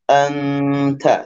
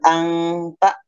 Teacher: Contoh, huruf ta tadi, karena ta ini adalah di ujung lisan dan pangkal gigi seri atas, maka setelah mendengungkan suara nunnya, maka langsung ke ta ya · Ya, contoh yang ta, misalkan anta ya, maka saya lebih cenderung ke ke tadi nun digunakan, didengungkan, kemudian langsung posisikan lidah kita akan segera mengarah ke huruf ta. Anta, cuman harus ada gunah 2 harokat ya. Anta, seperti itu.